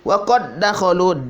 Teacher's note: Waqad dakhalu tidak dibaca waqad dakhalu, salah. Jadi kol-kolannya dihilangkan, dileburkan, masuk ke dal yang kedua.